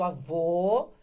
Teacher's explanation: o som que é fechado que é o masculino por isso avô tem o acento circunflexo